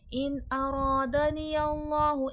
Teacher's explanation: इन अरादनी अल्लाहु, इनमें इजहार हल्की का क़ायदा है क्योंकि नून साकिन के बाद हुर्फ़ हल्की का हमज़ा आ गया है, रॉ पे ज़बर है, मोटा करके पढ़ा जाएगा।